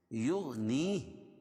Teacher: شأن یغنی، تنوین کے بعد حروف یومن کے 4 حرفوں میں سے یا ہے، اس لیے ادغام مع الغنہ ہوگا، یہاں غنہ کر کے پڑھیں گے۔ یغنی، یہ غین کو موٹا پڑھیں گے، یغ قلقلہ نہیں کریں گے لیکن اس کو موٹا پڑھیں گے کیونکہ حروف مستعلیہ میں سے ہے۔